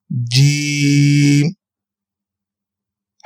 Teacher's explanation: جیم آپ کے زبان کے درمیان اور تالو کے درمیان کے حصے سے ادا کریں گے ہم جیم کو، جیم۔ ہا حلق کے درمیان والے حصے سے ہم ہا کو ادا کریں گے، ہا ہا۔